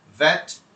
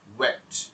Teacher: একটা হচ্ছে ভাইব্রেশন হবে এইটা, আর ওয়া হচ্ছে আপনার লিপস দুটো রাউন্ড শেপ হয়ে তারপরে সেখান থেকে বাতাসটা বের হবে। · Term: ভা এন্ড ওয়ার সাউন্ডের ডিফারেন্সটা